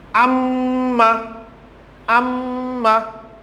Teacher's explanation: nun and mim used for uttering with the tashdid, I mean gunna, from the nasal, from the nose